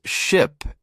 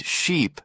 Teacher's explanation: ship and sheep sound similar but one has a short I and the other a long e